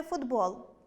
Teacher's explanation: Друге - це уподібнення за дзвінкістю Якщо у слові зустрічаємо два приголосні звуки, перший з них - глухий, а другий - дзвінкий, то дзвінкий завжди одзвінчує глухий